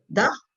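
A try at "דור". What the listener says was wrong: Dar. D'or. Dar. Ici, justement, c'est pas un A, c'est un O. C'est qu'on met d'art, mais en fait, on va dire d'or.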